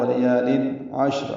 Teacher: عین وسط حلق سے ادا کریں گے۔ شین اور را وقفاً دونوں ساکن ہیں تو اجتماع ساکنین ہوا عشر۔